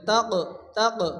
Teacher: কফের উপরে জজম আসছে কফ কলকলা অক্ষর হালকা ধাক্কা দিয়ে পড়তে হবে